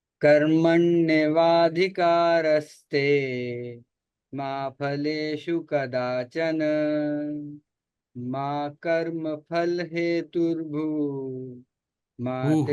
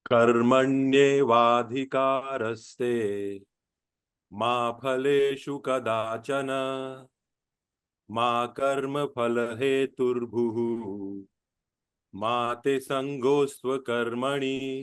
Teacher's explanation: your voice will go up and up at the first and third, and go up and down in the second and fourth